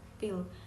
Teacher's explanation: I pada kata pil diubah menjadi I besar atau I lemah. Karena I di sini berada di tengah suku kata.